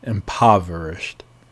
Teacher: The O is like a ah, impoverished.